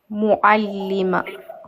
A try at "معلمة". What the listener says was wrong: Ta se prononce comme ta fermé. Ta fermé. La ta marbouta se prononce comme quelle lettre à l'arrêt? Regarde, le T fermé se prononce comme ha. Mais prononce bien l'Aïn. Mu'allimah. À la fin, il y a de l'air qui sort. Mu'allimah.